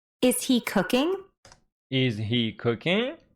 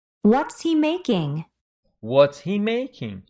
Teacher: for yes no questions Rising intonation for wh question or information questions the intonation is falling